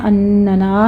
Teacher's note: اننا میں پہلے ہم غنہ کریں گے، نون مشدد ہے، غنہ واجبہ ہوگا ، اور پھر نا میں الف پورا ادا کرنا ہے آپ